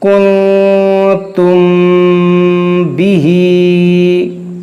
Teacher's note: میم ساکن ہے اور میم ساکن کے بعد با ہے، تو یہاں پر اخفائے شفوی ہوگا.